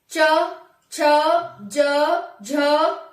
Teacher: हमारी जीभ है वो तलुए को छुएगी। तलुए का मतलब जो हमारे ऊपर होता है ना, जीभ के ऊपर वाला हिस्सा, उसको छूती है जीभ। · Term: तालु वर्ण